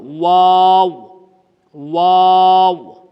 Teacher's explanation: اس کا مخرج دونوں ہونٹوں کے درمیان سے ادا ہوتا ہے